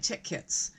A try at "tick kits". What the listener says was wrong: tit kicks. sounded like you said tit. Tick.